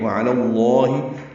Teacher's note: عین وسط حلق سے ادا کریں گے، لام پر کھڑا زبر تھا، ملانے کی وجہ سے زبر آئی ہے، وعلی اللہ، لام اسم جلالہ کو پر پڑھیں گے کیونکہ پیچھے لام پر زبر ہے